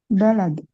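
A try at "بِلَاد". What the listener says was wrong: Bukan. Biladun. Ha, kalau balad nggak pakai alif. Kalau bilad pakai alif panjang.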